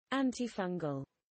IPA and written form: ˌæntɪˈfʌŋɡəl (antifungal)